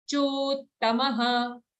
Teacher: Don't say chottamah, it's a double ta.